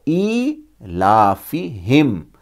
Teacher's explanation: پھر اس کے بعد ایلافہم، یہاں پر بھی الافہم نہیں ہے، ای ہے، حمزہ کھڑی سے ای، اسے ایک الف کے برابر کھینچیں گے